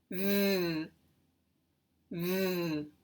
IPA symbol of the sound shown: v